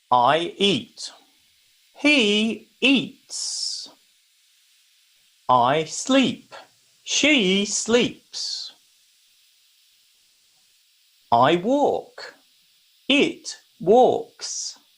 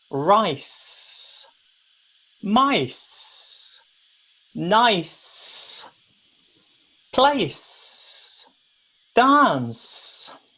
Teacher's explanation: that hissing sound of air coming out we're not using our voice